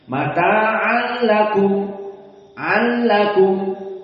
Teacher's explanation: Maka di sini idgham biduni gunnah atau bila gunnah. Mata'an lakum, an lakum, tidak ada pindah kepada hidung.